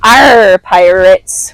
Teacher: I might employ rhotic R's, so they sound less like classy Queen's English and more like "Arr, pirates" with the hard R.